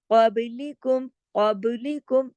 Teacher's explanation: با باریک پڑھا جائے گا لیکن کلکلے کے ساتھ